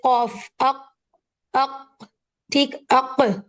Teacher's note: लेकिन जब आप अक पढ़ेंगे कफ अक अक ठीक अक तो आपको एयर का रिलीज फील नहीं होगा